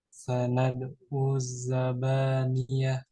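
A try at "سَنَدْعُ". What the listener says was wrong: Pakai ain. Sanad'u zabaniyah.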